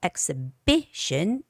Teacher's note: Exhibition, the stress goes on B-I